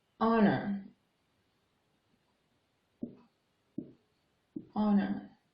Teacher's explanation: consonant letter H but we don't say it Horner me rather say this word honor with a silent H so it starts with a vowel sound therefore we use D we use the article and an honor